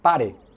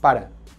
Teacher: nosotros tenemos una vocal neutra que sería un sonido entre la E y la A. Y eso sucede con E cuando se encuentra en posición átona, que no es tónica.